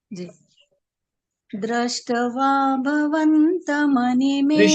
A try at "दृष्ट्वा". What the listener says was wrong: दृष्टवा, दृष्टवा, देखिए ट जो है ना, ट पूरा नहीं है वो। दृष्टवा बोलोगे तो चक्कर पड़ेगा। दृष्टवा, ये थोड़ा और फ्लो बनेगा आपका तो आ जाएगा बोलने में, है ना।